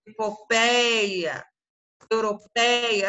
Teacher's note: a sílaba mais forte é a penúltima sílaba paroxítona